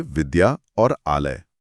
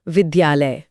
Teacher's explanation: विद्या के अंत में आ की ध्वनि है और आलय की शुरुआत भी आ से है। दोनों मिले तो बड़ा आ बन गया। विद्यालय। और इसी विकार के आधार पर संधि के भेद किए गए हैं।